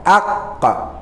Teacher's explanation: Jadi qaf dia di kerongkongan. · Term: makhraj qaf